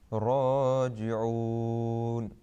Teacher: The ra will be thick because if it carries a fatha or a dhamma, then it's thick.